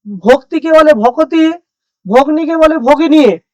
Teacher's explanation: প্রত্যেকটা দেখতে পাচ্ছ যে যুক্ত ব্যঞ্জনটা সরে গেছে এবং মাঝখানে চলে এসেছে, ভাগ হয়ে গেছে। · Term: মধ্য স্বরাগম